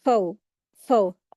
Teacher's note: वाव साकिन आया है, उससे पहले ज़बर आई है तो यहाँ पर वाव लीन हो रहा है